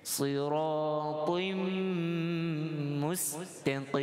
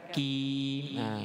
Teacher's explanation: Qaf yang berbaris kasrah itu ditebalkan. Qim, jangan pula qaf jadi kaf.